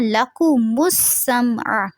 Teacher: سین میں سیٹی کی آواز رہے گی اور سمع عین واضح رہنا چاہیے